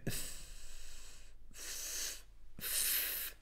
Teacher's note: اف مخرج الفاء. إذن بطن الشفة السفلى مع أطراف الثنايا العليا وهو مخرج الفاء. فنحن قلنا إذا أردت أن تعرف مخرج الحرف إما تسكنه اف أو تجعل قبله همزة وصل أو أنك تشدد ذلك الحرف فيصبح اف.